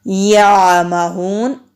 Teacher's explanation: یعمہون عین پر بھی ہم آواز کو جاری رکھتے ہوئے پڑھیں گے، اور ہا حروف ہلکی ہے، عین بھی حروف ہلکی ہے، دونوں کو حلق سے نکالیں گے۔ واو سے پہلے پیش ہے، واو مدہ ہے، 1 الف کے برابر لمبا کریں گے، آگے وقف کی علامت ہے، دو نون کو ساکن کر دیں گے۔